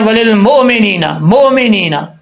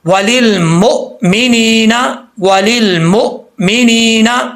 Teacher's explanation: حمزہ ساکن ہمیشہ، یہ تجوید کا رول ہے، حمزہ ساکن جو ہے ہمیشہ جھٹکے کے ساتھ پڑھا جاتا ہے